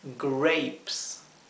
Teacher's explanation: Grapes, la dificultad está en la letra R. La R inglesa, que se pronuncia con la lengua dada vuelta hacia atrás del paladar.